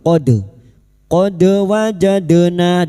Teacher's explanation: Dal sukun lagi. Qalqalah sugro. Jangan lupa dipantulkan.